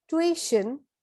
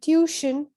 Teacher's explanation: the stress is in the first syllable in the british accent and the stress is on the second syllable in the american accent